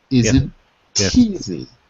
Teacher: when a vowel word like easy after a consonant ending word like isn't you get isn't teasy